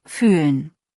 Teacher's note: Mit langem Ü, Lippen rund, Zunge vorne.